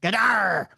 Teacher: It was like a 3-syllable growl, low and mean, something like "Gadar." I'm reading it exactly as it's Gadar. With it almost Scottish like, with the accent on the second syllable